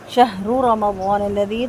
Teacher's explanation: شہر رمضان الذی، دونوں رو پر ہوں گے، میم کا زبر لمبا نہیں ہوگا، رو کا بھی لمبا نہیں ہوگا، ضاد کو 2 حرکت لمبا کریں گے، اور لذی میں زالیہ دی یہاں پہ مد جائز منفصل ہے، 4 حرکت مد کو لمبا کریں گے۔